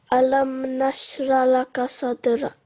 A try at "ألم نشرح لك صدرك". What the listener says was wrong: Okay, so there is a ha here. We can't forget about this ha. Alam nashrah laka sadrak.